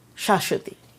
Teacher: So the soft consonant sha is almost rounded to make it sound like u